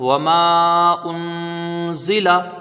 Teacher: میں سے ہے، اور نہ ہی حروف حلقی میں سے ہے، تو یہاں پر اخفا ہوگا، یعنی ایک الف کی مقدار غنہ کریں گے